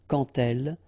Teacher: when you will have this D, you will phonetically pronounce it like T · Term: liaison